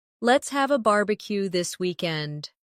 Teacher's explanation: Stress barbecue and weekend. So it sounds lively and friendly.